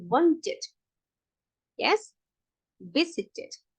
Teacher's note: We have to add another syllable, yeah? So we add ed and we pronounce it as another syllable